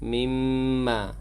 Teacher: Mimma, wajibul ghunnah, mim yang bertasydid itu wajib dengan dua harakat